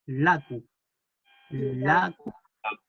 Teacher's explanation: hay una l interdental que cuando uno lo dice hay que poner la lengua entre los dientes